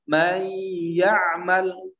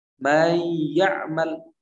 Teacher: Ketika kita baca may ya'mal, tidak huruf yang nun ini, huruf yang sukun, tidak masuk ke huruf ya dengan sempurna, tapi masih ada sisa. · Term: idgham naqis